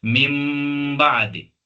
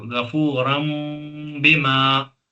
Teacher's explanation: तनवीन और नून साकिन या नून साकिन की आवाज मीम में बदल जाती है। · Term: इकलाब